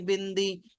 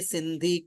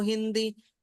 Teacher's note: हवा नाक से बाहर आती जब बोलोगे बिंदी